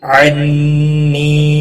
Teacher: نون مشدد پر گنہ ہوگا، اور یا مدہ بھی ہے، 1 الف کے برابر کھینچ کر پڑھیں گے۔